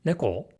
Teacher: if we want to say it as a question we have to add a rising inflection